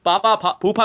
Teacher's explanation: और ये दोस्तों प वर्ग यानी जिसका स्पर्श व्यंजन जिसको वायु होठों से स्पर्श करते हुए निकलती है। होठों से टच करके जाती है वो ओष्ठ है। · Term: ओष्ठ व्यंजन